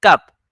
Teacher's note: there's no aspiration in Urdu you say park no expiration you say de Mata no aspiration